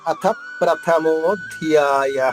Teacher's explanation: చివరిగా ఉన్న విసర్గ ఉచ్చారణ హా చెప్పాలి, హ్రస్వంగా దీర్ఘం రాకూడదు. ప్రథమోధ్యాయ ఇలా రాకూడదు.